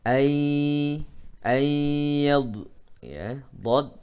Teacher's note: nun mati bertemu dengan ya maka hukumnya adalah idgham bi gunnah, maka harus ada dengung